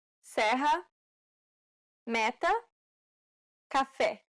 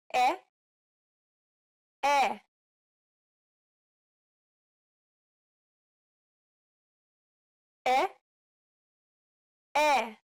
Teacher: This vowel sound is identical to the E in set. It's known as the open E sound in Portuguese.